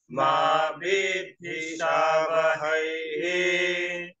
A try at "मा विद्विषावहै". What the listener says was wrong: विद्धि नहीं विद्वी विद्वी विद्वी तेजस्वी नावधीतमस्तु मा विद्विषावहै विद्विषावहै